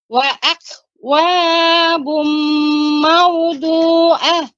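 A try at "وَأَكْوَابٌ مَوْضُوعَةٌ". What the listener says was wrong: Tapi pengucapan wa-nya cukup di ayun saja untuk mendapatkan 2 huruf. Adapun wa'akwabum, maka lebih dari 2 huruf, 2 harokat. Cukup di ayun saja. Wa'akwabum.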